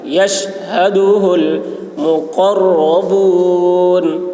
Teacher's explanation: شین کی آواز سیٹی جیسی ہوگی, ہا کی آواز بھاری ہوگی.